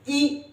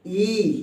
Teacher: इ छोटी ई है ना इसको जल्दी बोल देंगे इ बड़ी ई है इसको थोड़ा सा लंबा लेकर जाएंगे